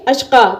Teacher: ایک زبر گرے گا اور ایک زبر کو الف کی طرح پڑھ کے وقف کریں گے اشقا۔ تو اسی طریقے سے یہاں پر بھی وقف کریں گے جس طریقے سے دو زبر پر وقف کرتے ہیں، اشقا ایسے کر کے یہاں پہ وقف کریں گے جب بھی آگے یا آتی ہو۔